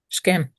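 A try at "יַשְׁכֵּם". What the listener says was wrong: yash. Well, the yod stays. Yashkem. Yashkem. That's it.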